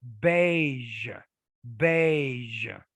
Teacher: a j and a z coming together kind of blending together to create a new sound